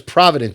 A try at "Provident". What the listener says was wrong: Provident Not Providence. It ended with No, it was Provident. It ended with the T.